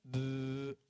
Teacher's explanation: on va donc avoir au niveau des cordes vocales uniquement un bruit qui fait en gros B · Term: vibration des cordes vocales